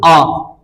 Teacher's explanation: जब हमारा मुख जो है पूरी तरीके से खुला रहेगा तो वो कौन सा होता है? विवृत